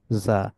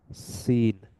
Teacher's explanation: সিনের ক্ষেত্রে tip of the tongue is near the upper front teeth allowing air টু pass. আর জায়ের ক্ষেত্রে vibration হচ্ছে, সিনের ক্ষেত্রে যেটা হচ্ছে না।